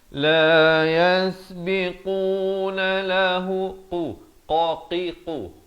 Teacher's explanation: Qaf ni makhrajnya di pangkal lidah kita ni. La yasbiqu 2 harakat.